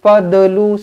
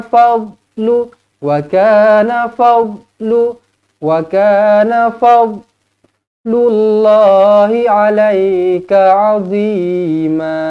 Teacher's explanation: Sekali lagi huruf dad di sini bukan huruf qalqala, jadi jangan baca melantun. Jangan fadlu, salah.